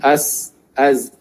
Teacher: dia istifal, dia pangkal lidah tidak boleh diangkat, dia sebut biasa saja.